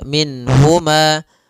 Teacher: Nun di sini harus jelas karena bertemu dengan huruf ha, maka tidak boleh ditahan. Misalnya ditambah dengan gunnah min huma, ini enggak boleh. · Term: izhar